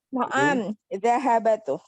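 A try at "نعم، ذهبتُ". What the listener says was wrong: Naam dhahabtu. salah ya, huruf ba-nya tidak fathah tapi sukun. Dhahabtu.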